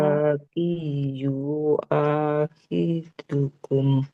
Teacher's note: Lamnya panjang. wa- Ada alif kecilnya harus panjang.